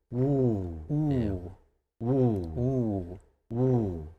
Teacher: I don't really hear the W sound so much. So more just like a ooh.